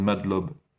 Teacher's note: On dirait qu'ils disent Madlob. Mange le A.